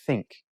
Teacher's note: the is hard or voiced you hum the the and then with like think it's a soft or unvoiced you don't hum you don't vibrate you just say think but it's still the tongue goes touches your teeth think that